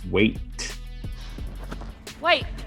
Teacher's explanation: Her very first word that we heard here was wait. Wait. The T is dropped of wait.